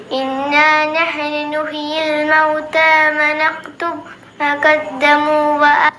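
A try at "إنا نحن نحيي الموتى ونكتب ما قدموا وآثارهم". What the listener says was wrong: വനക്തുബ് അവിടെ ബാ കേട്ടിട്ടില്ല. എന്താ അവിടെ ശ്വാസം വലിക്കാൻ നിന്ന്? ഇന്നാ നഹ്നു നുഹ്യിൽ മൗത വനക്തുബു മാ ഖദ്ദമു വആസാറഹും അങ്ങനെ ഓതണം.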